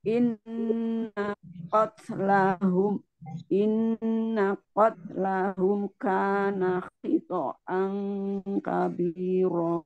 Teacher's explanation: Innanya pendek, in gunahnya yang panjang.